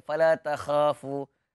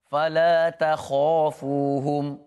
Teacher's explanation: Jadinya kha ini bila dia berbaris di atas tambah pula selepasnya huruf mat iaitu alif, dia ranking yang paling tebal untuk ditebalkan.